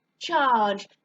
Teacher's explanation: There's not a short vowel sound before my J. There's a long sound, R